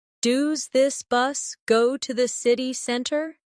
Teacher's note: In fast speech. Does this often sounds like do this?